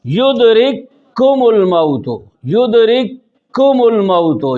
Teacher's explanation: युदरिकुमुल मौत, युदरिकुमुल मौत, यहाँ युदरिक अलग है, कुमुल अलग है। तो पहला काफ दूसरे काफ में दाखिल हो गया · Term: काफ के बाद काफ